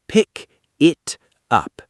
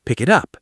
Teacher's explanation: But in natural speech, pick it up. The K from pick links to the I in it, it becomes one smooth sound. Pick it up, like one word almost.